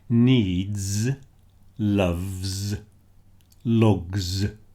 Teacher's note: those D, V, G sounds are all voiced, so the S also sounds voiced